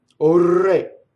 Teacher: the word O is a strong monosyllable, so the R will roll, even though it's surrounded by vowels